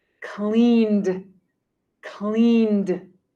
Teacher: The word clean has a N sound at the end, an N sound. Clean has the ED on the end pronounced like D.